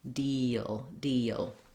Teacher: you'll have a little bit of a glide and a schwa in there